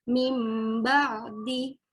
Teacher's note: Nun sukun bertemu dengan ba, jadi nunnya seperti mim.